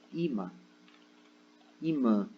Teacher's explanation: O i, ele é a sílaba tônica, e o mã, né? Que é essa segunda sílaba aqui, que ela é nasalizada, ela não é a sílaba tônica